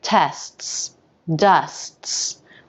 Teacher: like tests dusts we use a stop t this means that after the first s will very quickly stop the air flow for a moment and then release right back into the second s